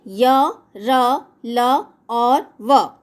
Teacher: इनके उच्चारण में श्वास का अवरोध बहुत ही कम होता है। अंतस्थ व्यंजनों के उच्चारण में जीभ मुख के किसी भी भाग को पूर्णतः स्पर्श नहीं कर पाती है। इन्हें अर्ध स्वर भी कहा जाता है।